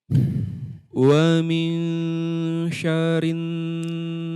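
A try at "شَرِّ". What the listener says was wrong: Nah, hilang lagi tasydidnya. Syarri.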